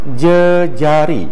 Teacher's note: Proses pengandaian ini melibatkan suku kata pertama dalam kata dasar. Bunyi vokal dalam suku kata yang digandakan ini mengalami perubahan iaitu e pepet.